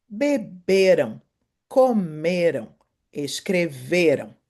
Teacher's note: a sílaba mais forte, a sílaba tônica, é a segunda do final pro início da palavra